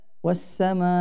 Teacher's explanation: As-sama ini hukumnya mad wajib muttasil, panjangnya 5 harokat.